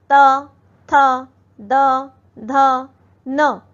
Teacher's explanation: अगला है दंत्य। दंते होता है जब दांत से हमारी जीभ टकराती है।